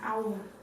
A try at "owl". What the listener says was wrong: With a W. Not how old, it's owl.